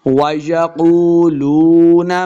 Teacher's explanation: قاف کو موٹا پڑھیں گے، واو مد ہے، اس کو 2 حرکات لمبا کرنا ہے